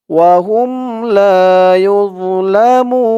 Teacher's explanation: মু বলে তিন আলিফ টান দিয়ে নুনকে ধরবে, নুনের উপরে জবরটা সাকিন হয়ে যাবে